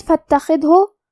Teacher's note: خا کو ہم حلق کے اوپر والے حصے سے پڑھیں گے